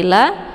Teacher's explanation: wala lanya dibaca panjang dua harakat yaitu mad thobi zahiri seperti la